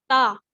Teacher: اپنی زبان کی جو نوک ہے, ٹھیک ہے, اس کو اپنے دانتوں کی جڑ سے لگائیں, اپنے دانتوں کی ٹپ سے لگائیں.